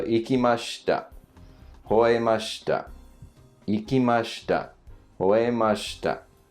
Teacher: starts low, goes up up and then comes down for the shita